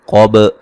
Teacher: قاف کو موٹا ادا کریں گے، با پہ قلقلہ کریں گے